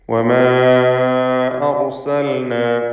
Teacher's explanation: വമാ എന്നതിലെ ദീർഘം മദ് മുൻഫസിൽ ജായിസ് എന്നതാണ്. അലിഫിന് 4-5 ഹറക്കത്തിൻ്റെ അളവിൽ ദീർഘിപ്പിക്കേണ്ടതാണ്. അർസൽന, ഈ പദത്തിലെ റായിനെ തഫ്ഖീം ചെയ്ത് തടിപ്പിച്ചുച്ചരിക്കണം.